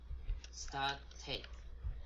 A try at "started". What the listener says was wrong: The second syllable, started. Yeah, the second syllable has a short E. So it should be sted. Started.